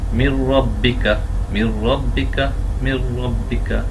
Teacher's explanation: তো এখানে নুন সাকিনের পরে র এসেছে। নুন সাকিনের পরে যখন র হবে, তাজদিদওয়ালা র, তখন আমরা তাকে মিলিয়ে পড়বো কিন্তু গুন্না ছাড়া।